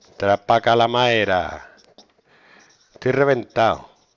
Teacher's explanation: Relajación y pérdida de la D intervocálica.